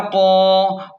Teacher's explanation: قاف کو موٹا پڑھیں اور ایک الف کے برابر کھینچیں